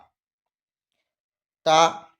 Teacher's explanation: জিভের আগা সামনের ওপরের 2 দাঁতের গোড়ার সাথে লাগিয়ে উচ্চারিত হয় তা।